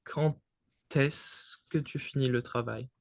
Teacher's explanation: what we call in French, la liaison, but it wouldn't be a D sound, it would be a T sound.